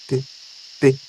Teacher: Às vezes toca no dente, às vezes um pouquinho ali atrás do palato.